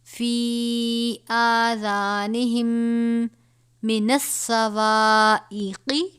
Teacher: اصابعہم فی آذانہم، یہ آذانہم میں میم ساکن ہے، اس کے بعد دوسرا میم ہے. یہاں پر ادغام شفوی کا قاعدہ لگے گا، یعنی غنہ کریں گے